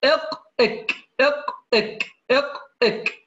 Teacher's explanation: أقصى اللسان من فوق أسفل مخرج القاف، تمام، مع ما يحاذيه من الحنك الأعلى ألا وهو مخرج الكاف